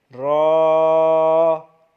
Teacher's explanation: تھوڑی سی وائبریشن صرف ہونی چاہیے، نہ اتنا محسوس ہو نہ ہی یہ پتہ چلے کہ بالکل خالی ہو رہا ہے